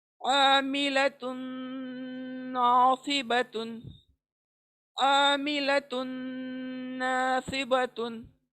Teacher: तुन की आवाज को नून में इदगाम कर रहे हैं हम, तुन की आवाज को नून में मिला रहे हैं